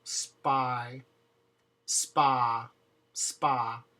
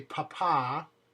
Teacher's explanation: If you put your hand in front of your mouth, you can feel there is no air.